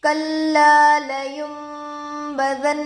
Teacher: نون پر جزم ہے، نون ساکن ہوگا، نون ساکن کے بعد با آ کر ہے، نون کو میم سے بدل کر گنہ اور اخفا کے ساتھ پڑھیں گے، اس کو اقلاب کہتے ہیں۔